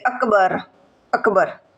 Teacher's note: બોલવામાં જોડિયો શબ્દ જેવો લાગે કે અકબર અકબર કવો લાગે છે ક છે એ આપણને અડધો લાગે છે ક ની અંદર અ ભળેલો લાગતો નથી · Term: હલંત